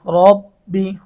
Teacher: রয়ের উপর জবর বা পেশ হইলে ওই রকে মোটা করিয়া পড়িতে হয় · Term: র মোটা